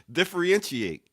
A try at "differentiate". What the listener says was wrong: You put the R in the wrong place. No. Differentiate. You just start with different. You start with different.